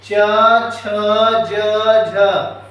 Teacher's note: छ वर्ग का उच्चारण स्थान देखिए तालु